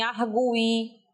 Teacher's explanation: Esse gui tem que ser emitido como forma tônica